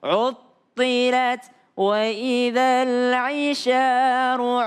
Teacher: Jadi jangan karena thnya tebal jadi unya menjadi o.